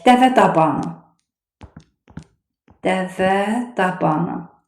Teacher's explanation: 2 söz birləşdi, bir mürəkkəb sözü əmələ gətirdi. Və burada da vurğu son hecəyə düşür. Dəvə dabanı bir vurğu altında deyilir.